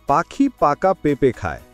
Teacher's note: এই বাক্যটিতে প ধ্বনি বারবার আসছে। প উচ্চারণ করতে আমাদের দুই ঠোঁট ব্যবহার করতে হয়। যখন আমরা এটি বারবার বলি, তখন আমাদের ঠোঁটের পেশি সচল হয় এবং জড়তা কেটে যায়।